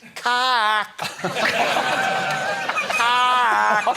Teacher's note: It's one of the few words you can say with your mouth open for the whole word, but you must click the second K off your soft palate